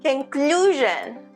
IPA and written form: kənˈkluː.ʒən (conclusion)